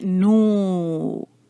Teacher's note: تو اس میں جو ہے آپ نے بس اس بات کا خیال رکھنا ہے کہ ہونٹوں کو گول کیا ہوا ہو، اور پھر اس کے بعد پیش کے بعد واو ہے تو تھوڑا اس کو لمبا کریں گے آواز کو